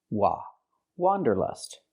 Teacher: For the first vowel, for the first syllable, use the open ah sound, like hot and stop.